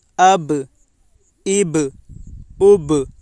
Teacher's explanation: پڑھتے وقت ان کے مخرج ٹکر کھا کر الگ ہو جاتے ہیں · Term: قلقلہ